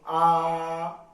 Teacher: जिस स्वर के उच्चारण में मुंह पूरा खुलता है उसको विव्रत स्वर कहते हैं